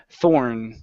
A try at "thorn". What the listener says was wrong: Good. Nice job.